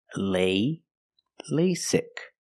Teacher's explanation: the first vowel is a long a like say and day lay lasic the second vow is a short I sound like